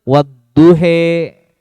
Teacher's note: Harokat imalah ini harokat far'i yang dibaca mendekati apa harokat kasroh. Harokatnya condong ke harokat kasroh.